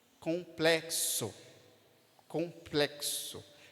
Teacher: que está tendo a função de representar dois sons complexo complexo percebe que é o som de KS colplexo complexo som de k e de S são dois fonemas